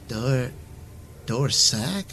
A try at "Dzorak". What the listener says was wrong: No, Dzorak with a Z.